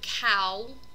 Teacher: When you combine two vowels together, you create a diphthong, which just means that you have a continuous change in the vocal tract. So it's kind of a curve between two vowels. So when you look at this, the word cow, you're actually getting this O and this U, these two back vowels, placed together.